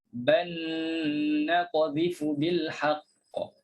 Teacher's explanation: dimasukkan lam dalam nun. Jadi yang nak diberi perhatian di sini dia ada gunnah. · Dia bukan semata-mata masukkan lam dalam nun saja. Tapi ada satu hukum lagi yang kita kena berikan, iaitu gunnah.